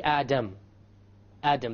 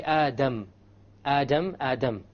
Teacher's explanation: the English D only uses the tip